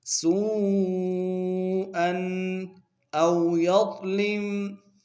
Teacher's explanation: او میں واؤلین بغیر کھینچے پڑیں گے، یا کو ضاد کے سامنے لائیں گے، ضاد کو موٹا ادا کریں گے۔